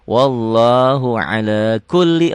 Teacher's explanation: lamnya double aja tanpa ditahan